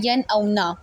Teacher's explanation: मैंने दरमियान में कोई वक्फ़ा नहीं लिया, मैंने आवाज़ को ज़ाहिर करके पढ़ा है, यन औ ना। میں نے کوئی غنہ نہیں کیا، یعنی کہ آواز کو ناک میں لے کر جا کر نہیں پڑھا۔